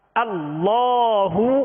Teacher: حمزہ کی آواز جو ہے ابتدائی حلق سے نکالیں گے